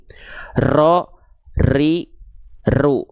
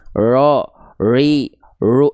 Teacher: Takrir itu bergetarnya huruf ro tapi dengan karakter getaran bukan yang berlebihan, bukan yang terlalu banyak. · Tapi getaran huruf ro itu dia sedikit aja tapi harus tetap jelas bukan berarti samar.